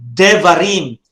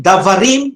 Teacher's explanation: davarim no but you will say devarim you reduce the ah into a short vowel